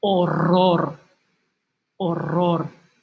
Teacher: it's doubled so it's going to have the strong sound the rolling sound